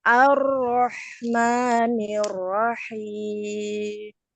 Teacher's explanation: Ro itu punya sifat tawasud ya, Bu ya. Jadi ngalir dikit suaranya kayak huruf lam.